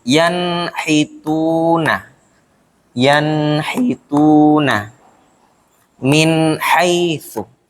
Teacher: nun mati bertemu ha. Maka bacanya itu dibaca terang atau jelas. Kalau dipraktekkan bunyinya seperti yanhituna. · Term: idhar, izhar